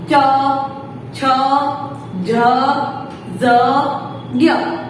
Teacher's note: Okay, फिर है च वर्ग, तो वो है तालव्य। तालव्य यानी कि हमारी जो जीभ है वो ऊपर, हमारे मुंह के जो ऊपर का पार्ट होता है वहां पर वो टच करेगी